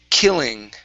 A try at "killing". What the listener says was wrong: Okay, give me a good L instead of kidding. Okay, don't hit your tongue as hard against the top of the mouth when you pronounce the L. So it's killing.